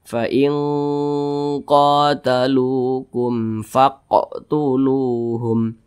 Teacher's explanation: berjumpa dengan huruf Fa bukan huruf ba bukan huruf mim berarti hukumnya adalah izhar syafawi dibaca jelas tidak berdengung